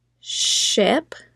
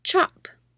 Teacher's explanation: SH, on the other hand, goes until you run out of breath